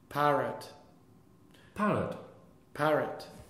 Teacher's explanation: the schwa is not a full value of syllable it's like a half value syllable